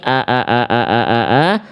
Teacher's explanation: Tumma liaqsol halqi hamzun hau. Makhraj hamzah itu dilafalkan dari tenggorokan paling bawah atau dari tenggorokan pangkal.